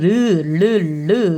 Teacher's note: 흘러나오는 리을이 유음, 흐름소리입니다